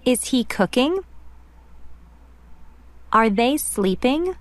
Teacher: las primeras preguntas tienen una entonación ascendente